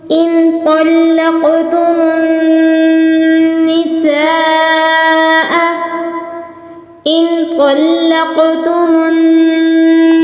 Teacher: لا جناح علیکم، لا جناح علیکم، لا جناح علیکم ان طلقتم النساء، ان طلقتم النساء، نون پر اخفا ہے یعنی بالکل ہلکا پڑھیں گے، اور تو پر اور قوف پر تفخیم کرنی ہے یعنی ان دونوں کو پر پڑھنا ہے، منہ کو گول کر کے پر کر کے پڑھنا، اور قوف تفخیم کے ساتھ ساتھ قوف پر قلقلہ بھی ہے یعنی لفظ کو ہلا کر بھی پڑھنا ہے اور پر بھی پڑھنا ہے، اور نون مشدد یہاں پر غنہ کریں گے۔